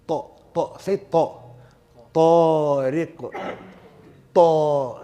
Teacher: Again, you're trapping that sound, closure. Notice how the sound is trapped between the tongue and the upper palate. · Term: itbaq